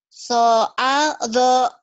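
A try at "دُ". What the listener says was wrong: Do-nya jangan soal do, biasa aja. Latihannya gini, di Garut itu ada dodol Garut ya, dodol Garut. Tapi do ini ngomongnya gini, dodol Garut, dodol, modul. Do-nya bulat ya, lembut.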